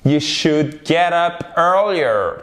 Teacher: Comme could, on ne prononce pas le L.